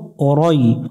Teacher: র অক্ষরটা মোটা করে পড়তে হবে এটা জবরে আকার পড়া যাবে না